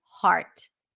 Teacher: for the word heart we drop the jaw it's a full on a sound there is a pure vowel there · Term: ah sound